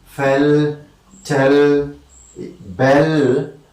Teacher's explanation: such a lateral sound which comes after a vowel sound like in fell, okay, is known as a dark L